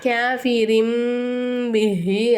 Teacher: தன்வீனுடைய குறியீடு இல்ல நூனே சாக்கினுக்கு அடுத்ததா பா வந்துச்சுனாக்கா நம்ம என்ன செய்யணும் தன்வீனையும் நூனே சாக்கினையும் மீமா மாத்தி உச்சரிக்கணும்